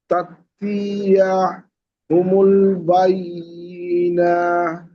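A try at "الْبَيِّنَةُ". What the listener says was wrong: বাইয়ি টান হয়ে যাচ্ছে, বাইয়িনা।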